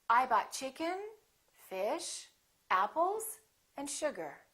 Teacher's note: The last one will have falling intonation. So we go up, up, up, down. Let's try that one more time.